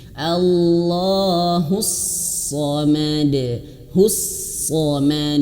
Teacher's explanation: shadnya tebalkan ya, karena memang sejatinya huruf shad itu tebal ya. Allahus samad, de samad, pantulkan, betul-betul pantulkan, sehingga di sini diberikan warna hijau seperti itu ya.